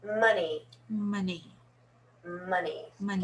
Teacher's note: it's an o but it's pronounced uh